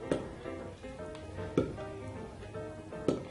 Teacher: la P suena... no vibra. Entonces el sonido de la P es un sonido sordo.